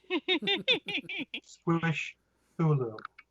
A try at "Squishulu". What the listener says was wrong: I just leave the extra th out. It's Squishulu. It just runs together.